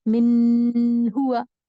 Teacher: Clear نون کا ایک مطلب یہ بھی ہے کہ آپ کو یہاں پرولونگ نہیں کرنا ہے، لمبا نہیں کرنا ہے، اسٹریچ نہیں کرنا ہے. من ہوا، من کو اسٹریچ نہیں کرنا ہے، غنہ نہیں کرنا ہے.